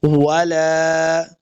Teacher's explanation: لام کے اوپر کھڑی زبر ہے، اس کو دو حرکات لمبا کر کے پڑھیں گے